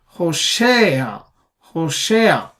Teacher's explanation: Stress is on the she syllable.